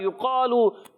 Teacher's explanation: میم مشدد کا قاعدہ ہے، ایک الف کا غنہ ہوگا، یقالو، قاف کو موٹا رکھنا ہے اور اس کا الف بھی موٹا ہو جائے گا